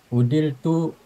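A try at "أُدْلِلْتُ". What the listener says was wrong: Ulangi Pak Haji, bukan udil tapi udilil, dipecah tasrifnya.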